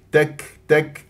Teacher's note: الكاف هنا مهموس همس لطيف ساكنه لا اقلق لها تستكبرون او ابالغ في الهمس تستكبرون فلا مبالغه ولا قلقله بالنسبه